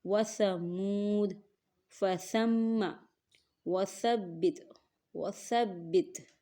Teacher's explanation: زبان کا سرا اور اوپر کے دانتوں کے اندرونی کنارے سے سا ادا ہوتا ہے۔ آپ نے اوپر کے دانتوں کے اندرونی کنارے سے زبان کے سرے کو ٹچ کرنا ہے، جڑ سے ٹچ نہیں کرنا، ورنہ سا جو ہے وہ صحیح طریقے سے ادا نہیں ہو پائے گا۔